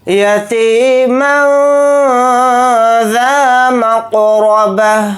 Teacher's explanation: ذال کے ساتھ الف مدہ ہے، ذال الف زبر ذا کو تھوڑا کھینچ کر پڑھیں گے ایک الف کی مقدار۔ میم کو قاف ساکن کے ساتھ ملا کر پڑھیں گے اور قاف کے اوپر جزم ہے تو قاف کے اندر قلقلہ کریں گے۔ را کو جلدی پڑھیں گے، را کے اوپر زبر ہے، را کو موٹا پڑھیں گے۔